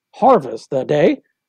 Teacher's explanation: harvest the day stressed unstressed unstressed stress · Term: choriam